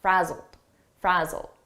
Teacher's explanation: here it's a past simple ed verb, but the pronunciation is a very soft D, and you almost don't hear it.